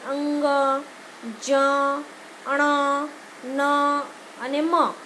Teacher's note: અનુનાસિક એટલે જે ધ્વનિ બોલતી વખતે નાકમાંથી અવાજ આવે, નાસિકા દ્વારા બોલવામાં આવે, આવા ધ્વનિને એમ કહેવાય કે અનુનાસિક ધ્વનિ કહેવાય. મુખનો માર્ગ અવરોધને કારણે બંધ થઈ જાય, મોઢું બંધ થઈ જાય અને હવાનું જે કાંઈ મોજું છે એ નાકમાંથી બહાર આવે ત્યારે અનુનાસિક ધ્વનિ સંભળાય. · અનુનાસિક એટલે શું? અનુનાસિક એટલે જે ધ્વનિ બોલતી વખતે નાકમાંથી અવાજ આવે, નાસિકા દ્વારા બોલવામાં આવે